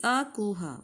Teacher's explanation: अ, क वर्ग, हा और विसर्ग ये कंठ से बोले जाते हैं